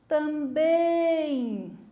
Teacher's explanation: ela tem a última sílaba forte eu vou gritar também é a última sílaba é mais comprida eu puxo na hora de falar